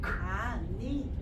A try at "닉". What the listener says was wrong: 네, 니가 아니고 니에다 기억 받죠.